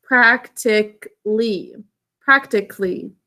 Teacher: we're not going to do a thinking cap over the a we're going to make the a totally silent because we tend to pronounce it practically